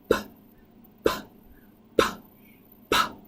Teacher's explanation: You can hear there's no voice happening down in your throat. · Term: unvoiced